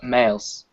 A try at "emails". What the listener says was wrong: yeah, you need to stress that. Otherwise we'll just think of traditional mail.